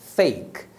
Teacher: Então quando você falar fake nessa palavra eu tô pronunciam é um som de vogal que é o Ei embora você veja a letra E aí no final ela não é pronunciada